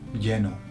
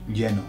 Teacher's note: the double L sounds like a very soft J